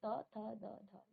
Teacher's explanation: आपकी जीभ आपके दांत को टच कर रही है, यानी कि इसका उच्चारण स्थान कहाँ है, दंत पे है, आपके दांतों पर है। ठीक है ना, तो इसे हम कहते हैं दंत।